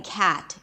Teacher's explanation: The 'a' sound is an open front vowel So, first of all, you have to open your mouth quite wide